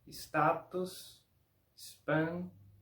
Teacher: En este caso, no sonido de si, como si hubiera una I después de la S, pero sonido de IS, como si hubiera una I antes de la S